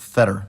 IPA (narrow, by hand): ˈfɛɾɹ̩